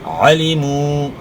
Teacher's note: عین کو اپنے بخر سے یعنی گلے کے درمیان سے ادا کرنا ہے. واو ساکن سے پہلے پیش ہے, وہ مدہ ہے, تو پیش کو اپنے ایک الف کے مقدار کے برابر کھینچنا ہے